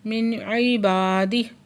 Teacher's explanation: نون ساکن کے بعد حروف ہلکی میں سے عین ہے، یہاں پہ پھر ہم اظہار ہلکی کا قاعدہ ادا کر رہے ہیں۔ با پہ علی مد ہے، 2 حرکت کھینچ کے پڑھیں گے، اور ہی پہ کھڑی زیر ہے، 2 حرکت کھینچ کے پڑھیں گے۔